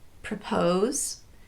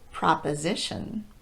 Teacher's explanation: usually if the pronunciation of pro is changing from the schwa vowel uh to ah or o it's because it's now falling two or more syllables away from the stressed syllable